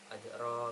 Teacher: fathah ada ada Alif dan RO di situ dibaca ee tafkhim karena berharakat fathah jadi dibaca tafkim dibaca tebal